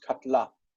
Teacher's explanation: historically it was katala, katala, and then the accent shifted to the end, and that syllable reduced